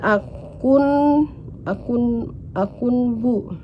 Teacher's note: Akun bu ini termasuk hukum tajwid iqlab karena terdapat huruf nun sukun bertemu huruf ba, dan ketika dibaca huruf nun diganti menjadi mim